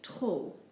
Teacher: We basically just ignore the P when we pronounce it, just giving us trop.